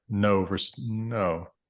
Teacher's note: subtle differences in English speaking dialects between how long that onset nasal might be held